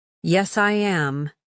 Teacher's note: Your voice falls calmly.